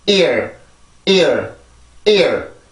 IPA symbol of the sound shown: iər